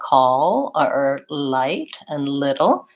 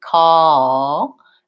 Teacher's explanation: So this is the main point, that I do still finish with the front of my tongue lifting, but whereas the first front L had my whole tongue lifting, this back one has the back of my tongue kind of more flat and down